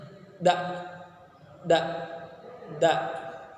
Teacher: Makharijul hurufnya punggung ujung lidah dan pangkal dua gigi seri muka atas. Sifat dari huruf da ada jahar, ada syiddah, istifal, infitah, ismat dan qalqalah.